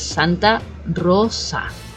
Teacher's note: that s it should not be pronounced as a z it should be like an S